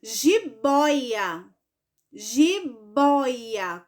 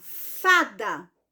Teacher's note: Porque a sílaba mais forte dela é a penúltima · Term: paroxítona